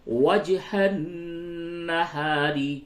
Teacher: علی الذین آمنوا وجہ النہار، وجہ جیم میں قلقلہ کیجئے، وجہ النہار، نون مشدد ہے، غنہ کیجئے